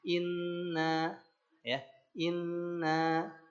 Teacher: Inna nun tasydid. Nah, ketika in masukkan ke rongga hidung, dengungkan. Tahan 2 harokat. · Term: gunnah